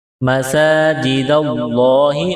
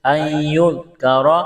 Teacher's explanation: لفظ اللہ کے نام سے پہلے زبر ہے، لفظ اللہ کے نام کو موٹا کرنا ہے